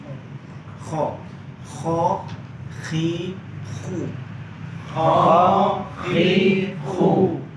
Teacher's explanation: kalau kho itu berharokat fathah dan berharokat dhammah lebih tebal suaranya dibandingkan berharokat kasroh